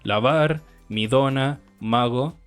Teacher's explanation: son de tipo fricativas. Es decir, generan fricción de aire más que una oclusión